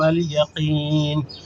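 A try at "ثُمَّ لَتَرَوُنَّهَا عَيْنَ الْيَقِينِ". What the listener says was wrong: ماں کو نہیں کھینچنا,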